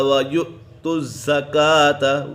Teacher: حمزہ کو جھٹکا دے کر پڑھیں گے